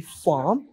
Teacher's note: in British accent we do not pronounce the r sound or the r letter instead we just silent it or we remove it from the word